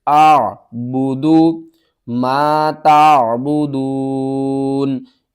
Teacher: عین کو آپ نے حلق کے درمیان والے حصے سے ادا کرنا ہے